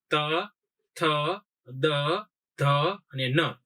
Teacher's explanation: હવે જયારે ત વર્ગ તમે બોલશો ત્યારે તમારી જીભ છે એ દાંતે ભટકાશે. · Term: દંત્ય